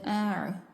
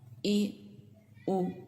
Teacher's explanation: عین حلق کے درمیانی حصے سے ادا ہوتا ہے اور حمزہ حلق کے نچلے حصے سے ادا ہوتا ہے